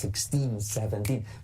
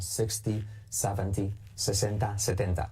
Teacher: Fijaos que estoy exagerando un poco el acentuar la segunda sílaba